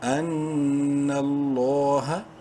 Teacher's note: زبر نل، لفظ اللہ سے پہلے نون کے اوپر زبر ہے، لام کو بولڈ اور کھڑی زبر کی وجہ سے لام کو ایک کے برابر لمبا بھی کریں گے